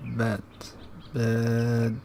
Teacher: If the body of the tongue rests at a relatively neutral height, as for the vowel bed, we have a mid vowel, bed, bed. Lowering the body of the tongue results in a low vowel, such as the vowel fat, fat, fat.